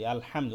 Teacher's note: ওই হাটা গলার মধ্যভাগ থেকে উচ্চারণ করতে হবে। হা, হা জবর হা।